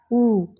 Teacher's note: ये जो उ है इसके उच्चारण में ओठ की सहायता लेनी पड़ रही है, तो ये आपका ओष्ठ्य वर्ड है।